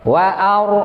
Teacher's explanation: Ra-nya berbaris sukun, sebelumnya fathah. Berarti tafkhim. Kita bacanya tebal.